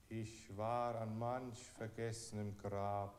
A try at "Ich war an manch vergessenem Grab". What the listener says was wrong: Singen Sie, sagen Sie es nicht in dem Rhythmus, sondern wie Sie es sagen würden.